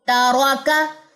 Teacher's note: تا تی تو تاراکا، تا باریک ہے، را موٹی ہے کیونکہ را زبر کے ساتھ آئی ہے تو اس میں اقصی لسان اٹھے گی، استعلا آئے گا